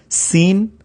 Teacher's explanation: حروف صفریہ، اس میں سین کی سیٹی کی آواز آتی ہے